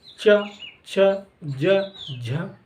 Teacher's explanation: तो तालु पर बोले, देखो च छ ज झ, यानी कि जो जीभ है वो तालु को टच कर रही है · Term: तालब